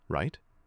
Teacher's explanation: I lower my volume a bit, slow the pace, and end with a tiny rise. Right? That rising intonation.